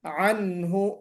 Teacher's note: عنہ عین نکالنا ہے، انہو نہیں ہونا چاہیے